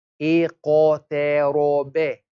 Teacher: Ta is thin, we smile on it. Ra has a fatha, it is thick, we don't smile on it. Ba has a fatha, it is a thin letter.